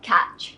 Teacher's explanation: make sure you pronounce the T in the middle of the word it is TCH a touch sound not a sh sound